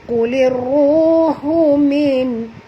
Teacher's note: Ini hukumnya idgham syamsi ataupun alif lam syamsiah Kulir ru di sini tebal, ra baris depan kena baca tebal, 2 harakat kena ada waw yang mati Kulir ruhu min ha di sini ha pedas, jangan tebal